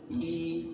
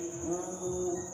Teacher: समृद्ध का मतलब कि जिन स्वरों के उच्चारण में मुख द्वार लगभग बंद रहता है, यानी 9 के बराबर खुलता है।